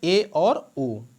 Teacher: अर्ध संवृत स्वर कौन होते हैं जिनको हम लोग हाफ क्लोज कहते हैं तो वे होते हैं ए और ओ